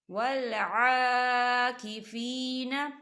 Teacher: یا ساکن ہے، یا ساکن سے پہلے زیر ہے، یہاں پر یا مدہ ہو رہا ہے، تو دو حرکت کے برابر اسے کھینچ کے پڑھیں گے